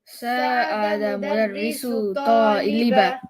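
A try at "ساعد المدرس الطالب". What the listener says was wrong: I need you to say the L here. Sa'ada al-mudarrisu at-taliba.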